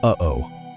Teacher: That hard catch in your throat right in the middle, that physical barrier holding back the air, that is the aleph. · the vocal folds, pressing together tightly to stop the flow of air, building immense pressure in the throat, before releasing it abruptly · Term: glottal stop